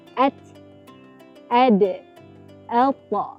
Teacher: Belakang hujung lidah dan awal gigi hadapan bahagian atas, keluar daripadanya huruf ta, huruf dal dan huruf ta.